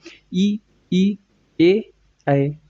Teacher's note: केवल जीहवा का अग्र भाग एक्टिव होता है। इसलिए अग्र स्वर इनको कह दिया गया है।